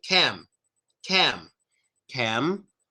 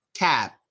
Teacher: Cam, cam, a little tiny hum. When you finish off with the B sound, like in cab, there's no humming, no vibration. Cab. But with the M, you want a little bit of vibration.